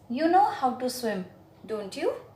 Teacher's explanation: know how to swim don't you now here my intonation fell so when the intonation falls down then it means that I know the answer but I'm just trying to confirm it from you